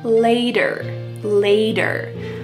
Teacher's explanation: There's a T, but it sounds like a D.